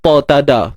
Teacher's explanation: ta dengan dal ni hujung lidah naik ke pangkal gigi belah atas